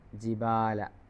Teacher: ഉണ്ടാകും അവിടെ ജിബാല എന്നുള്ളടത്ത് സാധാരണ മദ്് ഉണ്ട് ല്ലേ മദ്് അസ്ലി ഉണ്ട് ജിബാല സാധാരണ അലിഫിന്റെ ചെറിയ നീട്ടൽ അവിടെ കൊടുക്കാനുണ്ട്